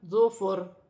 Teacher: وقف کی صورت میں دو زیر کی تنوین گر جائے گی اور را ساکن ہو جائے گی، را باریک پڑھی جائے گی